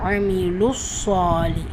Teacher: மத்தை தொடர்ந்து வரும் ஷதா மற்றும் சுக்கூன் மத்தை இல்லாமல் ஆக்கிடும். ஸோ அமீலுஸ் சேர்க்குறேன், ஷத்தாக்கு அழுத்தம் கொடுக்குறேன்